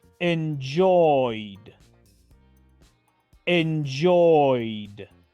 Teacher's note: Pronuncio entonces la terminación ed como la letra D. Así de fácil, sin pronunciar la letra E. La E es muda.